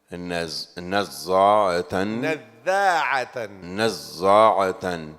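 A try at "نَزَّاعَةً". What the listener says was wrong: Don't make the za thick. Can you tell him how the za is?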